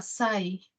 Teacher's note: Compara ese ay, que tiene la mayor fuerza la A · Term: diptongo decreciente